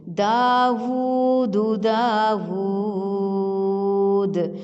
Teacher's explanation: مدہ ہے کیونکہ الٹا پیش واو مدہ کے برابر ہوتا ہے واو پہ ہونٹوں کو اچھی طرح سے گول کریں گے اور مد کھینچنے کے لیے بھی ہونٹ گول ہی رہیں گے · اور مد کھینچنے کے لیے بھی ہونٹ گول ہی رہیں گے دال کے اوپر پیش ہے ہونٹوں کو گول کریں گے لیکن لمبا نہیں کریں گے پیش کو صرف ظاہر کریں گے اور مجہول نہیں کریں گے